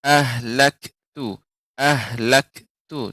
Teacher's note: Kemudian pada kata kaf. Kaf ketika sukun tidak memantul